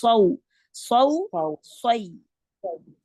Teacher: उसमें जुबान की जड़ भी उठेगी और दरमियान में जुबान के जो दरमियानी पार्ट है उसका जुबान का वो जैसे घड़ा सा बन जाएगा और आवाज जो है वो मोटी निकलेगी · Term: मोटा हरफ